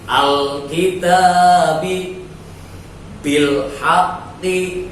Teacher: jelas suara alnya, suara L, huruf L itu lam sukunnya itu dibaca jelas namanya Al-Qamariyah